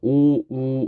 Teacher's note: 모양이 평범해 그다음에 위 외는 원순모음 원 동그라미 우리가 오우 하면은 입술이 동그랗게 돼요 이게 원순 모음입니다